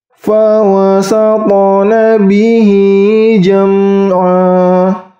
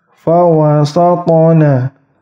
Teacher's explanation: Ingat, ta sukunnya, qalqalahnya ringan. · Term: qalqalah sughra